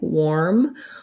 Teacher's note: here we have the letters AR, and they actually say the OR diphthong. And so this one looks like OR, and this is one that sounds like OR, worm.